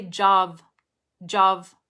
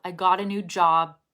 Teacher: got a new job okay it's not jav it's job and you don't even have to release the b you don't have to say job because you can hold it just like you hold the t